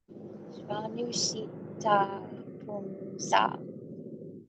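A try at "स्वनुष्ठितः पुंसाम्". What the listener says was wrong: Yeah, you gotta do that long A at the end. Pumsam. And that dot above the M is like kind of like a Dharma swanushtita pumsam.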